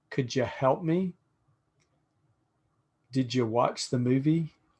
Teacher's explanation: d plus u becomes j